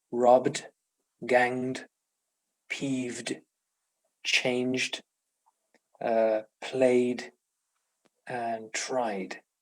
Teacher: we pronounce it as d after voiced consonants and vowels